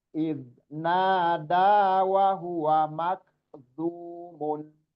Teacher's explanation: Iznada, da-nya yang panjang dua harokat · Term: matobi'i